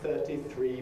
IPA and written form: ˈθɜːti ˈθriː (33)